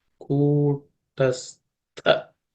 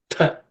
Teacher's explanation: This tha is aspirated tha. That's the second letter in the tha varga. So it has to be aspirated.